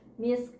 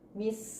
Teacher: kalau dia sukun keluar nafas, jadi tetap ada keluar nafasnya, misk. Kalau nggak ada k kan cuman mis, beda ya.